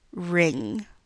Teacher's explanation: when you produce this word, you do not actually produce an N followed by a g, which would sound like ring, but you are only producing one sound at the end, ring. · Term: eng